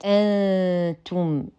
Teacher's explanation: نون ساكنه وبعدها التاء فالحكم اخفاء ويحتاج الى غنه كامله مرققه